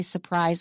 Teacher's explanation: You can also say surprise without the R.